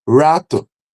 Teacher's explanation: Retroflexo, que é o R caipira em início de sílaba. Não acontece em português, acontece só em final de sílaba. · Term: R retroflexo